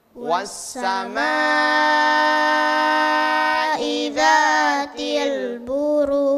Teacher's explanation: Ma-nya agak kurang panjang. Panjangkan sedikit lagi.